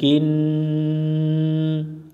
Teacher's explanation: নুনের উপর তাসদিদ, এই নুনে গুন্না করা ওয়াজিব।